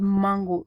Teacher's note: So the word mango, when you look at the initial sound in the word mango, the letter M, the sound so you notice that there's some air that is directed through the nasal passage that creates this sound and helps you speak out the word mango. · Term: nasal resonance